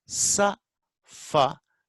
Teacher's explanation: there is no vibration, air flows freely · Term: voiceless